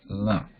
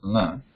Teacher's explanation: Anunasika is a nasal. So la itself is nasalized